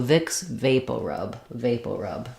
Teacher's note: We do use the O, and then rub is just the schwa sound